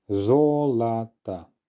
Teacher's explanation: the first syllable is the one under stress therefore the last two letter or are going to be reduced